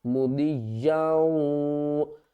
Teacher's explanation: دو زبر یاؤں، یہاں پر ادغام مع الغنہ ہو رہا ہے، یعنی کہ یا کو ہم واو کے ساتھ ملائیں گے اور ساتھ میں غنہ بھی کریں گے